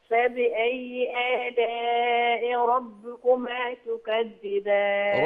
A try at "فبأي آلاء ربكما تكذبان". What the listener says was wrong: ربكما، دوسي على الكسرة شوية.